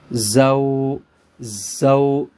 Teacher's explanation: لیکن یہاں پہ ایک بات آپ نے یاد رکھنی ہے، اب ہم جب اس کو واؤ کے ساتھ ملائیں گے، پہلا پارٹ جو زا والا ہے وہ سختی سے پڑھا جائے گا اور واؤ کو نرمی سے پڑھا جائے گا